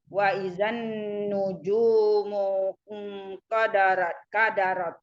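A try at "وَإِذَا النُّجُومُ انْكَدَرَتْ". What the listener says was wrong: Kadarot ya, bukannya kodarot.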